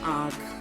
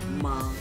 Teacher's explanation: जैसे जिसमें ना आप नाक से बोलते हैं, जैसे आँख, है ना, इसमें थोड़ा सा हल्का सा नाक से बोल रहे हैं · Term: चंद्र बिंदु